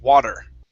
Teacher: pronouncing this t like a flap